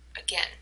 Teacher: you can tell that again the second syllable has the stress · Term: word stress